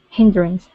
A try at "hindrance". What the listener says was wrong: Good, good. Nice job.